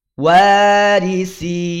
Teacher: Karena bacaan mad itu keluarnya dari al-jauf, dari rongga mulut, bukan dari al-khaysum, bukan dari rongga hidung.